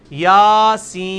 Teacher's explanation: سورہ یاسین کا میں نے ڈالا ہے, یا کے اوپر کیا ہے, کھڑی زبر, یاسین. سین کو آپ 5 سے 6 الف لے کے جائیں گے, اس کو 1 الف ہی کھینچیں گے.